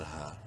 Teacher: ہا کو تین الف کے برابر لمبا کر سکتے ہیں مد کی وجہ سے